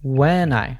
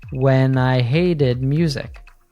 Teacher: she linked the N from when to the pronoun I. So it sounds like one word. When I. Let's put it all together.